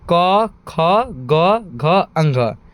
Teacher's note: ये सभी वर्ण कहां से निकलते हैं? कंठ से निकलते हैं। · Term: क वर्ग